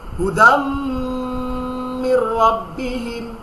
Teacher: মিমে তাসদিদ হলেই সাথে সাথে গুণনা হবে নাকের মধ্যে, নাকের মাসি থেকে উচ্চারণ হবে হুদাম মির রাব্বিহিম।